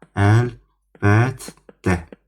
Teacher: İkinci T d-yə çevrilir.